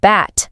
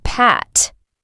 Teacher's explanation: B is a voiced sound, which means your vocal cords vibrate when you say it, like in the word bat. On the other hand, P is voiceless, meaning you don't use your vocal cords like in the word pat.